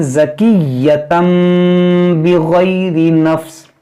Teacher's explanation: اس طرح پڑھیں گے ہم اس میم کو، یعنی اس کے اندر جو اس تنوین کے اندر جو نون ساکن ہے اس کو اس میم سے بدل کر پڑھیں گے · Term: اقلاب